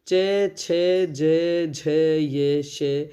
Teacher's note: इनका उच्चारण स्थान है तालु और इन्हें बोलते हैं तालव्य ध्वनियाँ।